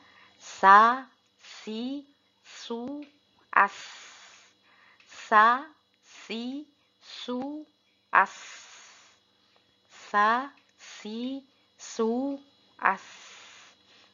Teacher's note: Huruf yang ketiga yaitu sin. Huruf sin harus terdengar seperti berdesis pula.